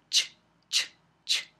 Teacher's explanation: Primero hay una oclusión y luego hay fricción. Entonces, las africadas tienen las dos partes.